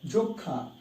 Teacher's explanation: হ্যাঁ, নাক থেকে উচ্চারণ হবে সানুনাসিক অনেকটা।